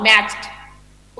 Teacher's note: For example I am saying मैच, catch MATCH, मैच। Okay, the spelling generally हम लोग इसको डॉ pronounce करते हैं, but in English it is टॉ sound, मैच्ड। Okay, बीच में ई है, ई साइलेंट है, तो मैच्ड, टॉ साउंड आएगा, चॉ एंड टॉ साउंड आएगा, मैच्ड।